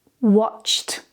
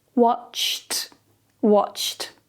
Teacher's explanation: We're not going to add the extra id because it doesn't end in TED or DED. It ends with a voiceless sound before the ED. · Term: t sound